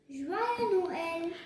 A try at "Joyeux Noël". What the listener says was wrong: You will not pronounce this as joyeux. You don't have to pronounce the S. You will only say Joyeux Noël.